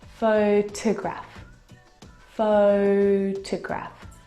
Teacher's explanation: the second syllable is unstressed and it is reduced down to the schwa sound